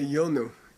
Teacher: Yas changes to yo, and then the next a drops out. So, and if you split it, it would be yo anu, and you'd have another extra beat.